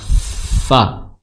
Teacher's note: ujung gigi seri atas bertemu dengan bibir bawah, fa, disertai dengan suara disertai dengan mengalirnya nafas seperti itu, fa, seperti itu.